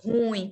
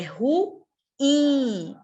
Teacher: A sílaba tônica é in. É uma oxítona.